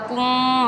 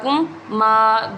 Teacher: دو میم نہیں پڑھنے، ایک ہی میم پڑھ لیں گے۔